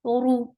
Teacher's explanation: ra is heavy for dhamma circle your lips. The sound is very short.